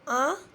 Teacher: तो आ नाक से भी आवाज़ आई और बिना रुके नाक मुंह से निकल गई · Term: अनुनासिक